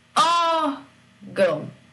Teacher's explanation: a sílaba forte é aquela que recebe o acento, que é O. O gão, no final, não é a sílaba tônica.